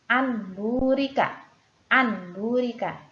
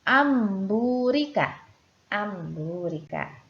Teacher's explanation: Di sini terdapat nun sukun bertemu dengan huruf ba juga, maka huruf ba berubah menjadi huruf mim. Cara membacanya amburika. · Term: iklab